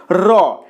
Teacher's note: ব্যঞ্জন ধ্বনিটি উচ্চারণের সময় জিহ্বার অগ্রভাগ কম্পিত হয়। র এ কারণে এই ব্যঞ্জন ধ্বনিকে বলা হয় কম্পিত ব্যঞ্জন ধ্বনি।